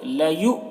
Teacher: حمزہ ساکنہ ہے تو جھٹکا لگے گا